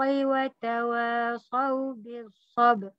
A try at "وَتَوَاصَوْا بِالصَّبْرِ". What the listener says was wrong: Mana ra? Sabr. Jangan tekan di ba.